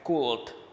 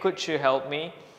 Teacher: Anda harus drop suara L-nya atau huruf L di sini jangan terdengar.